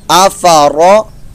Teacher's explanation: را پر زبر پیش ہو تو اس کو پر موٹا بھی ادا کرنا ہے